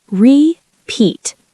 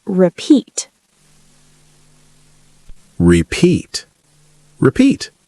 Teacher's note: Stress on the second syllable, not repeat.